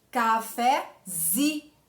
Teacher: Quando eu formo cafezinho, a minha sílaba tônica não é mais o fé, ela passa para o zi